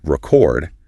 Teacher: putting the stress on the second syllable for the verb record